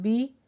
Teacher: زیر ہے تو اس کو بی کا ساؤنڈ دیجئے بی. بے نہیں پڑھنا